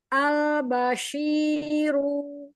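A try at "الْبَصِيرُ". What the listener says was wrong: Jangan dipanjang ru-nya.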